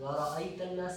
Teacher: را باریک، یہاں پہ ورا، را بہت موٹا نہیں پڑھنا، ورا نہیں پڑھنا.